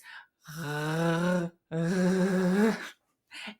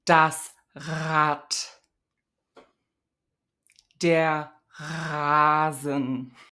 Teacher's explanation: It's the most common variant, the voiced uvular fricative. It sounds like this, and that's the most common R sound in Hochdeutsch, and this occurs in word onset position, syllable onset position at the beginning of words and syllables. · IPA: [ʁ]